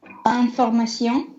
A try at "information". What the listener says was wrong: Information, и сион глубже, да? Information.